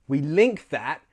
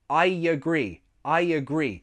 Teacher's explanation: We link that with a y sound. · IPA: /j/